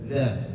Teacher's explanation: Nah, masih terdengar ada yang baca za. Nah, ini huruf zal makhrajnya adalah ujung lidah bertemu dengan gigi seri bagian atas. Jadi, kalau kita bahasakan bahasa simpelnya adalah lidahnya digigit dza. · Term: huruf dzal